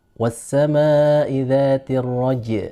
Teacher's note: Ketika dia disukun, jimnya dia tipis